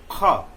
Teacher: ख के नीचे अगर नुक्ता आ गया तो ख, यानी कि जीव मूल का उपयोग जरूर करेंगे। इसमें भी ग, यानी अगर क ख ग, चूंकि एक ही वर्ग से है, कंठ से ही बोला जाता है, लेकिन तीनों के बोलने में हम जब बोलेंगे तो जीव मूल यानी जीव का जो अंतिम भाग जो रूट है उसका प्रयोग करेंगे।